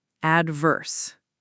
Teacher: the stress is on the first syllable, adverse